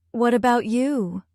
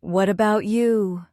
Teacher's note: Notice the music in your voice. Gentle rise, gentle fall. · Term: Intonation